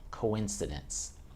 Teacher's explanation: The key in that word, if you can hear it, is the S to say it long and strong.